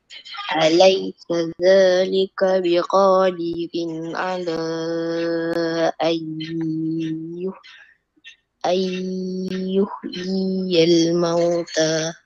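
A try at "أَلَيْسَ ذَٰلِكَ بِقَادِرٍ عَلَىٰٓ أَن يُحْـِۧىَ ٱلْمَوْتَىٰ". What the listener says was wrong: Jangan baca laju-laju. 2 harakat. Ayyuhyiyal mauta.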